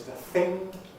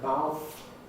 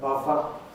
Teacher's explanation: th fronting dental fricatives moving forward in place of articulation